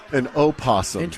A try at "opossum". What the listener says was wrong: I mean, I get there's an O, but that's a silent O.